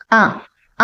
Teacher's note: ఆ అన్నప్పుడు మనం అది కంఠంలో నుంచి వస్తుంది వాయిస్ చూడండి, కాబట్టి ఇది కంఠ్యం.